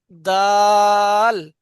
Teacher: হ ইয়াজের হি, হুম, দা দাল ইয়াজের দি, দাল, জিভের আগা সামনের দা উপরে দুই দাঁতের গোড়ার সাথে লাগান